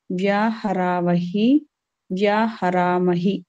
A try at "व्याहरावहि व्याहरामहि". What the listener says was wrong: Not dirgha, vyaharawahi, vyaharaamahi.